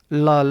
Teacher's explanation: इसके बाद दोस्तों पार्श्विक व्यंजन, जब उच्चारण करते समय जिह्वा के जो हवा है वो जिह्वा के बगल से गुजर जाए, निकल जाए, तो आपका पार्श्विक व्यंजन कहलाता है। ला बोलते समय जो वायु होती है वो जीभ के अगल बगल से निकल जाती है।